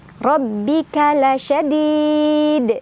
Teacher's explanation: Ro dibaca secara tafkhim karena ro barisnya di atas, ditebalkan ya.